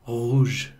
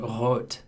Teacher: the hanging ball in the back of your mouth is vibrating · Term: uvular R